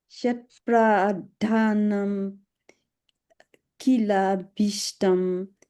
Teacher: you were being as careful as you could to get these aspirates right, pradhanam and habhishtam